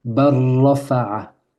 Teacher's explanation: Et pour fluidifier, pour faciliter la lecture, pour enlever toute lourdeur, la règle dit de sauter, de sauter le lam.